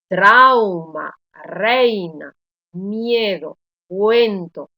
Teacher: notar que la vocal abierta tiene mayor intensidad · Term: diptongo